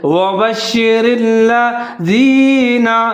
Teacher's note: را کے نیچے زیر ہے، اس کو باریک پڑھنا ہے، اس کو موٹا نہیں پڑھنا۔ آگے لام پھر مشدد ہے اور اس کے اوپر زبر ہے، لام اور را دونوں کو ساتھ میں ملا کے پڑھیں گے، جیسے وبشر الذین، زال کا خیال رکھنا ہے، اس کو باریک پڑھنا ہے، اس کو زا نہیں پڑھنا، سیٹی نہیں بجانی۔